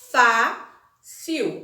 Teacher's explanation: A sílaba forte é a fá. É a penúltima.